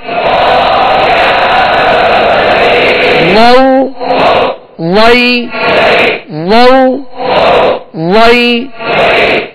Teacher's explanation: وا کو پر پڑھیں گے, موٹا پڑھیں گے اور نرمی کے ساتھ ادا کریں گے, اس میں سختی نہ ہو